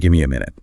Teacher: you'll notice the t or the v sound just disappears. The M or N sounds kind of take over and carry the rhythm themselves.